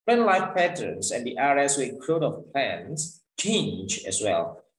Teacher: However, as the ice age and glaciers covering part of the earth began to melt and retreat, plant life patterns and the areas where growth of plants change as well. Jadi ada penekanan di kata kerja yang mana misalkan di sini kata kerjanya yaitu change, itu ditekan. Misalkan dari kata plant sampai kata plants itu subjek kalimat yang mana kita tidak perlu membuat sebuah naik turun atau istilahnya rising falling tone gitu ya. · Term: verbnya ditekan